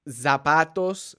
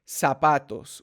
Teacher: this letter up because they always want to say Z but Z the actual sound does not exist in Spanish it is an S sound